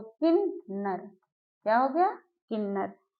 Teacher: माँ हमारा अनुस्वार में जाएगा लेकिन उसका उच्चारण ना में होता है